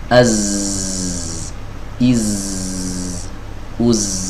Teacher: ada getaran di sini. Berarti ini zai ini memiliki sifat jahar